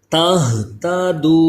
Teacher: ہا کو حلق کے نیچے والے حصے سے ادا کیجئے، اس میں سانس کی آواز بالکل مکس نہ ہو